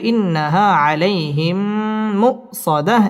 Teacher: মিম সেকিনের বামে মিম আসছে ইদগামে মিসলাইন গুন্না করে পড়তে হবে